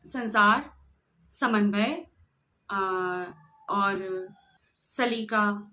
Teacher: अच्छा हां यहां पर जब जीभ जीभ की जो नोक है वह ऊपर के दांतों को स्पर्श करती हुई सी प्रतीत होती है। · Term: दंतव्य स